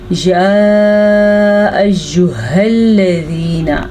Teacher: इस हा को आपने छाती से निकालना है। अगर इसको गले से निकालेंगे तो ये हा या खौ बन जाएगी।